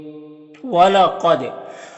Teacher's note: यानी दाल को अदा करते वक्त इसकी आवाज अपने मखरज से टक्कर खाकर अलग हो जाएगी। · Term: कलकला